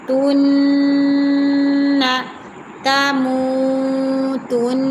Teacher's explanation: ہے، یہاں ہم غنہ کریں گے، تن، نون زبر نا، تن، ہمیشہ اس نون مشدد پر آپ نے غنہ کرنا ہے